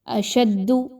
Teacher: دال مشدد ہونے کی وجہ سے شین اور دال کو آپس میں مضبوطی کے ساتھ ملائیے اور پھر دال کی پیش کو پڑھیے۔